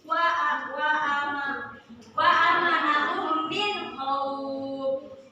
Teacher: hukum bacaannya idgham mimi karena mim bertemu dengan mim teman-teman. Jadi dibaca didengungkan